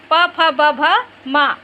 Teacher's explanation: ये जो 5 जो वर्ण हैं ओठ से बोले जाती है, इसलिए जो है होष्ठ वर्ण कहते हैं इसको। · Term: ओष्ठ्य